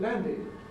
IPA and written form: ˈlændɪd (landed)